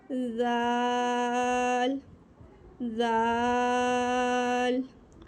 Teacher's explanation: then उसका भी यही मखरज है, जैसे सा का था ज़बान की नोक जब सना अलिया के किनारे से लगेगी यानी कि सिरे से लगेगी तो ज़ाल अदा होगा